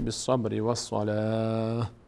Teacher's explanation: اگر وقف کنیم میشه بالصبر والصلاه، ه خوانده میشه.